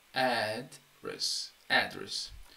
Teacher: correct but there is a different meaning between address and address address is a noun and you can see that the stress is on the first syllable